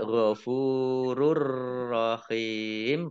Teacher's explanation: Domah tanwin bertemu dengan huruf ro, bacaan idgham bila gunnah. Masuk dengan tidak mendengung. Nah, ditandai roknya ada tasdidnya, dibaca double roknya.